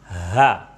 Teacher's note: Ha itu makhrajnya ada di pangkal tenggorokan yang harus dibaca agak lebih dalam. Jadi seakan-akan ada sampai ke dada, padahal makhrajnya hanya di pangkal tenggorokan.